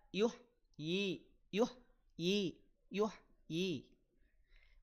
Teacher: ha sukun alirkan suaranya jangan diputus ya